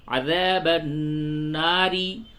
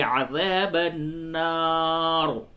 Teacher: اگر اس جگہ پہ وقف نہیں کریں گے تو را کو باریک پڑھیں گے کیونکہ را پہ زیر ہے، عذاب الناری، اور اگر وقف کرتے ہیں تو را موقوفہ ما قبل زبر ہے تو اس کو پر کر کے پڑھیں گے، عذاب النار۔ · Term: رائے موقوفہ